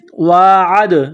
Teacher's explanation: وَإِذْ عین دال زبر عد، دال ساکن ہے تو یہاں پر قلقلہ کریں گے